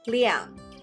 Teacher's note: both are fourth tones